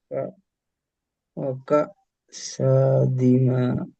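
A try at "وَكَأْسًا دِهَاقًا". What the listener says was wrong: সা কেন হচ্ছে? দু জবর সা, গুণনা করতে হবে না? ওয়াকাসান।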